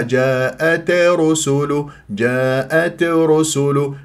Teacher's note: التاء في الوقف والوصل ماذا مهموسه وهمس لطيف لا تبالغوا